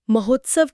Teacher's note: महा के आ और उत्सव के उ ने मिलकर ओ बनाया। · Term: गुण संधि